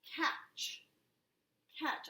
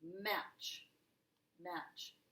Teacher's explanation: I don't hear the T.